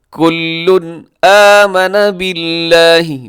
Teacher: کل پہ تنوین ہے، تنوین کے بعد حمزہ ہے تو یہاں پہ اظہار حلقی ہوگا۔ کل آمن باللہ، باللہ لفظ اللہ باریک ہے، اس سے پہلے با کے نیچے زیر ہے۔